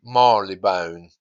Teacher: You often hear people saying Marylebone to avoid the R completely.